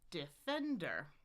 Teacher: primary stress. This is pretty normal on the second syllable. Da da da. Defender.